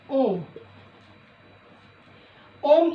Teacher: दीर्घ से तिगुना समय लगने वाला स्वर जो है हमारा प्लुत्व कहलाता है। इसीलिए संस्कृत में जब ओम लिखा जाता है तो यहाँ पर 3 लिखा जाता है।